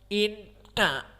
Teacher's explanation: Idan makhrajuhu dari khaysum. Inna, maka jika kita tutup hidung kita, inna tidak akan bisa terbaca, menunjukkan bahwa idgham kita benar, makhraj kita dari khaysum benar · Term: nun musyaddadah